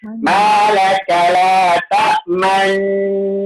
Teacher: Dengung dulu, tekan dengung dulu huruf nun tu, baru dimuncungkan. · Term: ismam